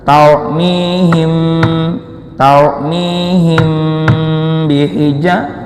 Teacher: Hukumnya ikhfa syafawi, samar bunyi M-nya.